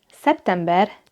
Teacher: E is a front vowel. That's why september takes the ben ending.